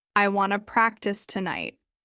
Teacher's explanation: Start with want to, which often becomes wanna.